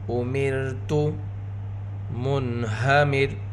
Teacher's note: نون ساکن کے بعد حروف اظہار میں سے ہا، یہاں پر نون ساکن کا اظہار ہوگا۔